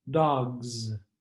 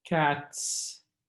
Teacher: The two sounds are related. The yellow Z is the voiced counterpart of the yellow S consonant.